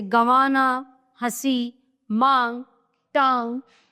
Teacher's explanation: उच्चारण करते समय हवा नाक और मुख से समान दबाव के साथ बाहर निकलती है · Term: अनुनासिक